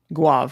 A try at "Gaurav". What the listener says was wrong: Gaurav. There's an R in there.